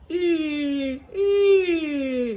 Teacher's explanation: So it's not really E and it's not ooh, it's somewhere in between. E. The lips are rounded a little bit and you get a little bit of that forward tongue. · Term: mixed vowels